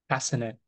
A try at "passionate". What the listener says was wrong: No, not not the S. It's sh passionate.